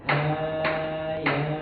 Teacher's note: untuk hayanya nggak boleh terlalu panjang Pak, 2 harokat aja. Jadi ketukan 2 harokat itu seperti kita begini aja, gitu, seperti gitu.